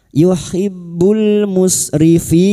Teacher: bertemunya mad dengan huruf hidup yang dibaca wakaf mad arid al sukun. Empat harakat kita panjangkan. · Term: mat arid li sukun